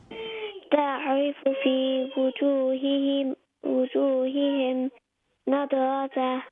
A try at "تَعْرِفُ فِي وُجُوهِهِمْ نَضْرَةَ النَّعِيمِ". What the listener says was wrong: Okay, it's not nada. There's no qalqala on the da.